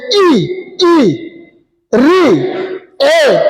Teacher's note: छोटी, बड़ी, री और ए और ऐ, ये हमारे जिह्वा के अग्रभाग से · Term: अग्रस्वर